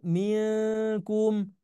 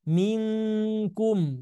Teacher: Jadi lebih ke eng, betul-betul eng ya. Jadi pekat sekali bunyi engnya. Kalau untuk nun sukun atau tanwin bertemu dengan huruf kaf. Minkum. Jadi bukan milkum.